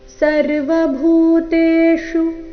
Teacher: ಭೂ ಮಹಾಪ್ರಾಣ ದೀರ್ಘ ಶು ರಸ್ವ